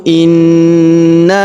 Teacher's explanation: Kemudian huruf ha kita panjangkan dua harakat karena terdapat alif di depannya